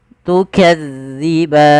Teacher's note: Harusnya tukadzi, tipis zalnya, tidak ada desis